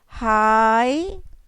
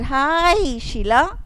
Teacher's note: Notice that the I sound in hi is extended.